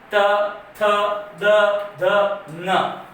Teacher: जीभ कहाँ टकरा रही है? दांत से। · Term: दंतीय